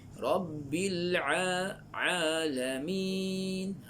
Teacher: Ain, huruf ain makhraj dia di halqum.